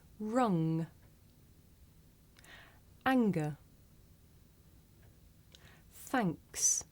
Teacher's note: word thanks and at the end of the word rung now we make this sound towards the back of the mouth um and if you do this sound correctly you can feel a vibration in your nose